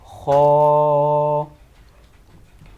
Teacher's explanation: اس کا مخرج تا حلق کے اوپر والے حصے سے ادا ہوتا ہے